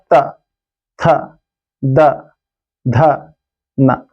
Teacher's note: हमारा जीभ जो है दांत का स्पर्श करेगा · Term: दंत वर्ण, दंत्य वर्ण